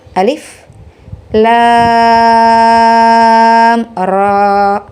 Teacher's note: Kalau kita pahami, maka hukum bacaannya adalah izhar syafawi. Jadi dibaca jelas satu harokat, tidak idgham ya, tapi dibaca jelas · ro berarti cara bacanya 2 harokat ya, karena mad tabi'i harfi